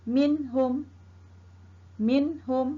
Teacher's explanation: ha ha ialah huruf izhar halqi Hai bermain ep di sini kita hendak baca dengan tidak dengung mana kita baca dengan terang dan nyata